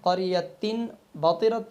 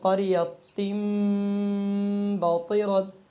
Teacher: اب تنوین کے بعد میم ہم نے نہیں پڑھا، کیونکہ تنوین کے بعد جب با آئے گی تو یہ با آنے کی وجہ سے تنوین کی آواز میم میں بدل جائے گی